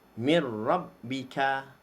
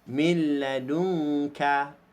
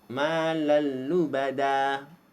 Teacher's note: Memasukkan sebutan nun mati atau tanwin ke dalam huruf ra dan lam tanpa dengung.